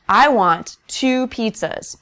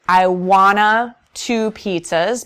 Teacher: wouldn't minimize twwo to sound like the two in want to we would always keep two the number two fully pronounced and enunciated